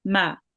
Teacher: So we have meme with the fatha. So it's ma, meme maftu, and it's just one count.